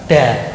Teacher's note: Jadi ujung lidah dikenakan pangkal gigi seri yang di dalam itu da. Kalau da itu lidahnya kenanya tuh langit-langit mulut da itu. Nah, itu dimajukan sedikit menjadi da.